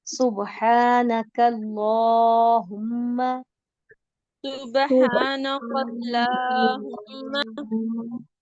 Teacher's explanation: काफ बारीक है, अल्लाह का लाम मोटा है। अल्लाह के लाम को जब खींचेंगे आप तो वो मोटा होगा, और काफ को आपने बारीक रखना है, दोनों चीजों का, क्योंकि ये दोनों एक दूसरे की बिल्कुल अपोजिट चीजें और इकट्ठी आ गई हैं, तो बहुत ध्यान रखना है।